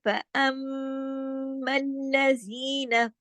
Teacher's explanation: फिर आगे चलिए फअम्मल्लज़ीना, ये जो ये देखिए यहाँ पे मीम पे तशदीद है, यहाँ पे इदगाम हो रहा है, और ये इदगाम कौन सा हो रहा है, इदगाम ताम बिल गुन्ना, यानी भरपूर गुन्ने के साथ इदगाम हो रहा है, ठीक है। तो इसको क्या कहते हैं, यहाँ पे जो गुन्ना हो रहा है मीम की डबल होने की वजह से, मीम की तशदीद की वजह से, अकमल गुन्ना, ठीक है, अकमल गुन्ना बड़ा गुन्ना, ठीक है, अब ये जरूरी है।